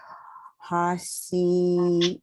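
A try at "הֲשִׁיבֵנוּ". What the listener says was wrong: She. Remember, it's on the right side. She. Not a, it's not a sin, it's a shin.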